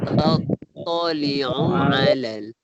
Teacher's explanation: Tattali'u tak panjang, satu harakat je. Jadi kita masukkan dengan ala tu.